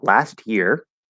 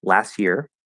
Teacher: just completely dropping the t and keeping the y